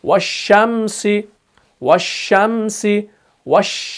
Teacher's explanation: या हम ऐसे कह सकते हैं कि जब भी हम शीन को अदा करते हैं तो इसके मखरज में आवाज फैल जाती है, इसके मखरज में आवाज फैल जाती है, तब जाके हरफ शीन अदा हो जाता है। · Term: सिफत तफशी